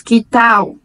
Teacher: Que tal? Com atenção especial para a letra L no final da frase, que em português nós transformamos automaticamente em um U e pronunciamos que tal.